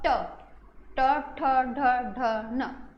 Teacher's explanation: ट, ट जब बोलते हैं ना, तालु के थोड़ा सा आगे से जीभ जो है टच हो रही है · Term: मूर्धा